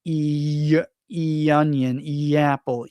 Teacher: There's even a little Y sound